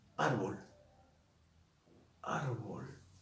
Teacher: Es grave porque lleva la mayor fuerza de voz en la penúltima sílaba. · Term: grave o llana